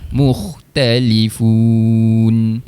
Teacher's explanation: Hujung sekali pastikan berhenti pada makhraj huruf nun. Hujung lidah sentuh pada langit.